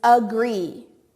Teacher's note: you hear that schwa sound at the beginning